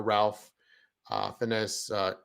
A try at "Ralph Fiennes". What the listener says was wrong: Rafe. Rafe. The L is the L is silent. Rafe Fiennes.